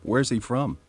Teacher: there's a falling intonation in who's john mayer and where is he from